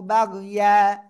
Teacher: গোলতা বাদে দুই জবর রয়েছে, এই জন্য এক জবর বাদ দিয়ে এক আলিফ টেনে পড়েছি